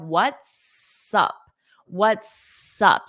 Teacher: so you can hold out that s before you say up